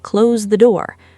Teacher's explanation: The voice falling firmly at the end, signaling finality and authority. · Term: falling pattern